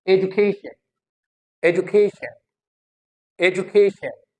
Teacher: Now you see a a a is taking time, Ju is not taking as much time as a was taking.